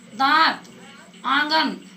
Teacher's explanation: अनुनासिक जो है नाक और मुंह दोनों से बोला जाता है। जैसे लिखिए, 5 दांत, आंगन, तो नाक और मुंह दोनों से ये हवा निकलती है।